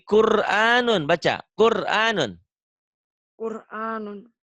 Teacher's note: Tetapi sebelum roh mati barisnya di mana? Di atas. Maka rohnya dibaca Tebal. tebel atau disebut juga Tafhim. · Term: Tafkhim